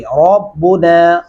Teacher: ربنا ہونٹ تھوڑے گلائی شکل میں لائیں گے، را اپنے آپ موٹا ہو جائے گا، پر کر کے پڑھا جائے گا